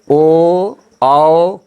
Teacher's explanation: ओ औ का उच्चारण स्थान कंठ और ओठ दोनों है। उदावतो कंठोष्ठम का अर्थ हुआ ओ औ का उच्चारण स्थान कंठ और ओठ है।